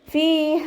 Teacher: ഫീഹ ഫ ലൈറ്റാക്കിയിട്ട് ഉച്ചരിക്കുക. നമ്മുടെ മേലെ മുൻപല്ലിൻ്റെ അറ്റം താഴെ ചുണ്ടിൻ്റെ ഉൾവശത്ത് നനഞ്ഞ ഭാഗത്ത് വെച്ചിട്ട് ഉച്ചരിക്കുക. യാമദ് കൂടെ വന്നിട്ടുണ്ട്, 2 കൗണ്ട് നീട്ടാൻ ശ്രദ്ധിക്കുക.